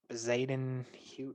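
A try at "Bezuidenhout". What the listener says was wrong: No, you don't pronounce the Z. It's Budenhout.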